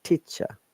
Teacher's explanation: We see in teacher the R is silent.